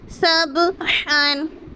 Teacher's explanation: سبحن، با پہ قلقلہ کریں گے، با حروف قلقلہ میں سے ہیں اور حروف قلقلہ ساکن ہیں، یعنی با کے اوپر جو جزم ہے تو با ساکن ہو گیا تو ہمیں با پہ قلقلہ کر کر پڑھنا ہے